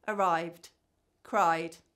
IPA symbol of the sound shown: d